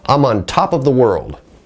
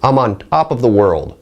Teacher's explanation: when I use the unaspirated T sound, it sounds a little weirder. It sounds like maybe a non-native pronunciation of the word.